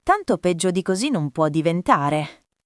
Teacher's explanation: Va veloce fino a così. Poi una piccola pausa prima del finale e non può diventare scende di tono come una constatazione inevitabile